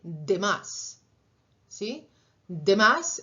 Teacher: esa de está tocando los dientes